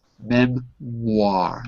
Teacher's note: All of you added the W sound. It's not written, but it is pronounced.